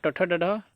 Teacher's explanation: मूर्धन्य से आपका ट ठ ड ढ